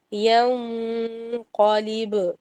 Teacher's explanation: ینقلب میں آپ نے اسمائلی فیس بنانا ہے اور قاف کو صرف موٹا کرنا ہے